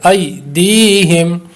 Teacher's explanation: ای پہ یالین ہے اور دی پہ یا مدہ ہے، اس لیے ای کو لمبا نہیں کریں گے، دی کو لمبا کریں گے